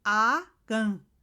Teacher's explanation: En la primer A notamos que es una A yurugua, una A oral bien abierta, se nota bien la A.